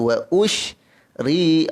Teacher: ra baris bawah nipis